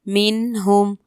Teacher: میم نون زیر من ہا میم پیش ہم من ہم. یہاں پر نون ساکن کے بعد ہا حروف حلقی میں سے ہے، یہاں بھی اظہار ہوگا